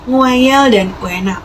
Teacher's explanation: Yang kedua, ada diftong turun membuka maju gabungan huruf vokal U dan E yang sebagai contoh terdapat pada kata nguayel dan uena.